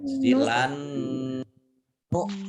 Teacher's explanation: Dibaca gunnah atau mendengung, ditahan 2 harokat.